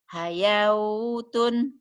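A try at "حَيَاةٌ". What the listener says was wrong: jangan dibaca. Ya, wawunya jangan dibaca, kan nggak ada tanda. Ya, pokoknya kalau nggak ada tanda jangan diapa-apain walaupun ada hurufnya. Ibu tinggal baca hayatun, jangan hayawautun ya. Wawunya jangan dianggap.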